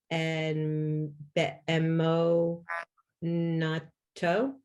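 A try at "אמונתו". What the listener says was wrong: Close. What's the mem's vowel? Right, but emunato.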